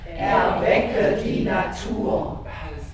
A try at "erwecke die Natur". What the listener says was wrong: Ihr sprecht zu weit vorne. Das ist für eine Aussprache zwar sehr schön, für Deutlichkeit und so weiter, aber wir müssen erstmal den Raum hinten haben. Dann können wir nach vorne die Maske nehmen, sagt man.